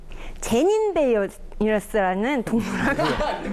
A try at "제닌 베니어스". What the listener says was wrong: 약간 혀에 아스팔트가 깔려 있어요. 약간 좀 굳어 있는 느낌이 있어요.